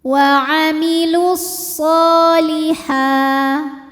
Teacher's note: Sebab shad berharokat fathah berdiri, maka dipanjangkan shadnya ini 2 harokat saja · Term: mad tabi'i muqaddar